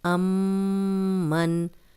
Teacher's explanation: امن میم پہ شد ہے تو ہم غنہ کریں گے۔ یہ ناک میں آواز لے کے گئے ہیں، غنہ ناک میں تھوڑی دیر آواز کے ٹھہرانے کو کہتے ہیں، اور میم پہ جب بھی میم پہ شد ہو اور نون پہ شد ہو تو ہم غنہ کرتے ہیں۔